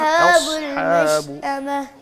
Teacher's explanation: اصحاب نہ کہیں، حمزہ باریک ہوتی ہے نا